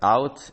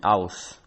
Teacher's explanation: intervocalic and word final t become the fricative s, while in other positions it became the affricate ts.